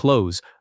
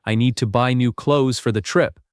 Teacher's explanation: Most learners try to pronounce every letter here, but the correct sound drops the th almost completely. It sounds like clothes.